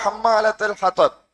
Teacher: ஹம்மாவுல சத்து செய்யப்பட்ட மீம் வாரத்தால 2 ஹரக்கத் நீட்டணும்.